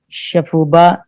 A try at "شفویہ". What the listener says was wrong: یہ نقطہ رہ گیا، شفویہ یا شفہیہ. ہاں، یا شفہیہ، لیکن شفویہ ہی زیادہ بولتے ہیں.